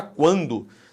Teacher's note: esse U é pronunciado, o que existe é um ditongo. É um chamado ditongo crescente nasal.